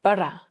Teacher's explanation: He almost rolls his R sounds.